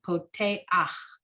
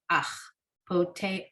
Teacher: So this is the tricky ending. This is where you have a chet with a a under it at the last letter of the word, and you say it vowel first, then consonant. So poteach.